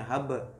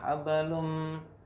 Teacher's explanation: Nah, ini di tengah nih kebetulan huruf qalqalahnya. Sukunnya hab. Jadi nggak usah terlalu besar gitu qalqalahnya. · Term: qalqalah sugro